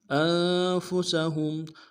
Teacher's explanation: ہاں کو نون ساکن کے ساتھ ملانا ہے، نون ساکن میں غنہ کریں گے · سین کی سیٹی باریک ہوگی